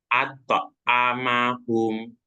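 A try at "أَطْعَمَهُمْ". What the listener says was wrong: Di sini ainnya ya bertemu nyoto ain itu ain terdengar masih seperti hamzah ya. Coba diulang. Ato ato amahum ato amahum.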